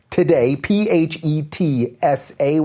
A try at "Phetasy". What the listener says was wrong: Phetasy. Yeah, no, you said S-A-Y.